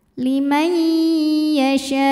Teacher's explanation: nun sukun menghadapi huruf ya maka Nun masuk ke ya disertai dengungan